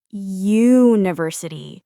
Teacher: We say a university because when you say university, the sound at the beginning is you, like the letter y. That's a consonant sound. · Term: y sound